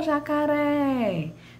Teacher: Mas, se eu falo chamando uma pessoa, eu chamando algo ou uma pessoa, eu vou chamar jacaré, jacaré, né? Vejam, o ré é a minha sílaba com maior tonicidade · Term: sílaba tônica